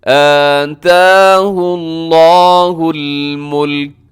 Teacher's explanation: آتاہ اللہ الملک، یہاں پہ الملک کا جو لکھا ہوا ہے اس کے بعد رموز اوقاف میں سے میم ہے، اب یہاں پہ وقف ضرور کر دیجیے گا۔ جب آپ وقف کریں گے تو آخر میں کاف کو ساکن کر دیں گے